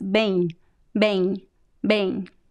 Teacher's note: Don't pronounce the M sound. It's bem, bem, bem.